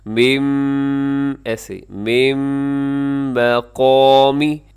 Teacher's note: نون ساکن کے بعد میم ہے اور میم حروف یرملون میں یہاں ادغام کیجیے گا